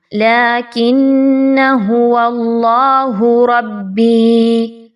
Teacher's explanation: اللہ کے جو لام ہے اس کو اچھے طریقے سے، اللہ کے حرف کے لام کو پر پڑھیے، باریک نہیں پڑھنا